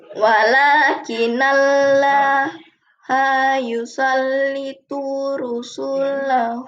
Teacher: karena nun mati bertemu dengan huruf ya tidak dalam satu kata, maka harus dibaca dengung selama dua harakat atau satu alif kurang lebih tiga ketukan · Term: idgham funah, idgham bil gunnah